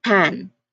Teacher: For p sound, it's just your lips coming together and then popping open. No teeth involved. Like only lips, they are just popping open.